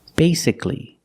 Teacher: the first syllable is a long a like say